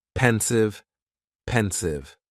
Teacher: Just two syllables and the stress is on that first syllable.